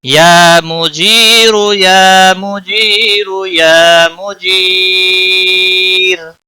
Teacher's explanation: باریک اس لیے پڑھا جائے گا کہ را ساکن سے پہلے جب بھی یا ساکن ہو تو را ساکن باریک ہی پڑھا جاتا ہے وقف کی صورت میں